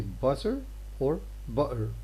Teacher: in London Cockney has a glottal stop between vowels.